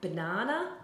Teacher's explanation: the ba is a weak syllable, and na-na they are more stressed